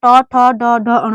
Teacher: तो जो हमारी जीभ है वो तालू से ऊपर, ठीक है, तालू से ऊपर मूर्धा पे चिपकती है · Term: मूर्धा वर्ग